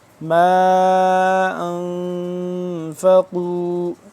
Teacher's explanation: 2 سے 3 الف کے برابر، یہ اس کو لمبا کریں گے کیونکہ چھوٹی مد ہے